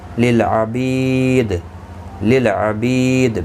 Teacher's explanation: بی یا مدہ ہے، ایک الف کی مقدار کے برابر کھینچ کر پڑھیں گے. دال ساکن پڑھا جائے گا وقف کی صورت میں، اس پر قلقلہ بھی ہوگا.